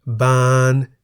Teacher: the single syllable in the word บาน is a live syllable because it has a sonorant final consonant น หนู